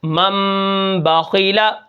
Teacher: غنہ کرتے ہیں اور ناک کے اندر آواز کو لے جاتے ہیں، اور وہ جو نون ہوتی ہے اس کی آواز میم کے اندر تبدیل ہو جاتی ہے۔ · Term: اقلاب